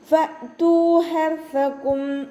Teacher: ഫ ലൈറ്റാക്കിയിട്ട് ഉച്ചരിക്കുക. മേലെ മുൻപല്ലിൻ്റെ അറ്റം താഴെ ചുണ്ടിൻ്റെ ഉൾവശത്ത് വെറ്റായ ഭാഗത്ത് വെക്കുക. ഹംസ കൊൽക്കല ലെറ്റർ അല്ലാത്തത് കൊണ്ട് ഹാഫ് സുക്കൂന് കൊടുക്കുക കേട്ടോ.